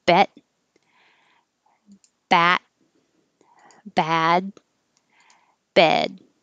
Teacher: same exact vowel but ending with a d makes it a little longer